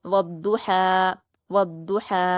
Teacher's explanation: सिर्फ दाद को पुर पढ़ना है। वाव और हा को बारीक पढ़ेंगे। · واو پر حرکت جلد پڑھیں گے، ضاد پر تشدید حروف شمسی کا قاعدہ ہے تو واو کو ضاد سے ملا کر سختی سے پڑھیں گے، ضاد کو پر پڑھیں گے اور جلد پڑھیں گے، ہا پر کھڑا زبر ہے، 2 حرکات کھینچیں گے · صرف ضاد کو پر پڑھنا ہے، واو اور ہا کو باریک پڑھیں گے